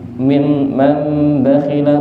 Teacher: nun sukun ketemu ba niku kan enten tondo mim nggih. Dadi niku dibaca mendengungnya diganti ke m. Mim man bakhila, bukan man bakhila tapi diganti ke m. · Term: iklab